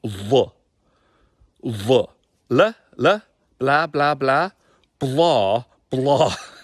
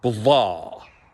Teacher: You can see that there's a different energy. There's a bit of a sideways action going there because it's a thicker sound coming off the front teeth. Blah. So all of these things together give us something that's authentic, Gaelic, and different from the English sound, blah. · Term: thicker Gaelic L sound